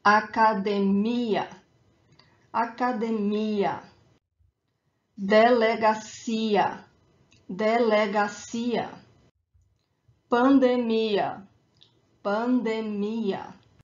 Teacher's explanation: So the strong syllable, the stronger syllable is the last one, democracia. So for these words that end in ia, when they do not have a graphic accent elsewhere on the word, the emphasis, the stronger syllable is the last one, is that ia at the end.